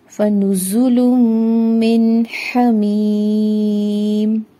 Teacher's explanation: मीम ज़ेरिया मी है, दो हरकत लंबा करेंगे और मीम पर सकून की सूरत में जब हम आयत को स्टॉप करेंगे तो 6 हरकत इसको तूल देंगे, जो कि अफजल है।